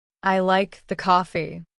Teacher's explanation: Stress on I means I not someone else like the coffee.